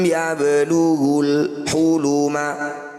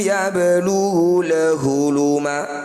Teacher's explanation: bunyi lam sukunnya dibaca jelas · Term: izhar qamariah